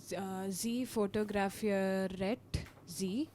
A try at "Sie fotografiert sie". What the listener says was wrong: No E required.